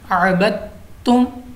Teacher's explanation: दाल को हमने इधर साइलेंट रखना है, खामोश रखना है